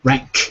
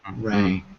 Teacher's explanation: the difference between the K and the G is how hard you put the back of your tongue against the back of your throat